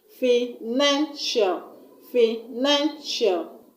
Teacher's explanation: I'm going to stress on the second syllable from the end of the word. And the second syllable is NAN, N-A-N. Financial, financial.